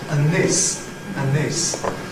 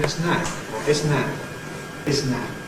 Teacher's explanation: After and, for example, you get just a lengthening of the N. So and this, standard and this, becomes and this, and this.